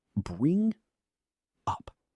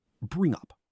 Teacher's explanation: Notice how the ng sound links directly into the vowel of up. Slow. Bring up. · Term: connected speech